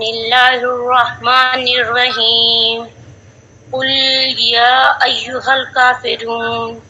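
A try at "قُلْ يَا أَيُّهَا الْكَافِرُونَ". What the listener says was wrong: ایک سیکنڈ، کل کو نہ کھینچیں.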